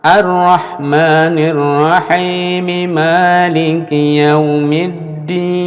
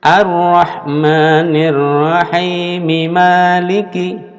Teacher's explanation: Mi harus dibunyikan langsung ke ma.